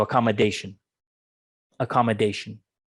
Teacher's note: i say that accommodation it's second syllable stress accommodation accommodation and you also have a stress the second to the end